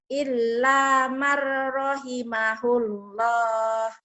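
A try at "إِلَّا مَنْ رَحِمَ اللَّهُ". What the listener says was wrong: Iya, ada ketinggalan di marnya ya. Illa marrahimahullah.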